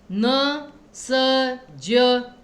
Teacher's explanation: जब बोलते समय आपकी जो जिह्वा है ना वो ऊपर वाले दांतों के पीछे टच करती है, मतलब कि आपके वो मसूड़ों में ऊपर वाले।